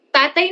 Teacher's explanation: Ang salitang tatay naman ay may diptonggo. Ito ay ang diptonggong ay at ito ay nakikita sa huling pantig ng salita na tay.